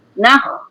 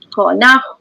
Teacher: kha di kha yang tempat ni di pangkal halkum kan